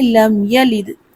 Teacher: لم یلد ہے تو لم یالد نہیں کرنا، یا کو لمبا نہیں کرنا، یا کے اوپر زبر ہے اس کو جلدی سے ادا کریں گے، لم یلد۔ اور دال حروف قلقلہ ہے تو دال پر آواز پلٹے گی، قلقلہ ہوگا، کیسے پڑھیں گے؟